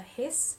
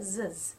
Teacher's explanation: the difference between the hiss, where there's no interaction between your vocal folds, no vibrations, and the zzz when you're voicing it, because you'll be able to feel the zzz vibrations here.